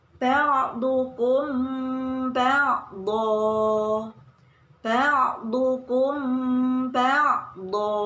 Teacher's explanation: Ikhfa syafawi artinya dibaca samar dan didengungkan. Apabila ada mim sukun bertemu dengan huruf ba, maka dinamakan ikhfa syafawi.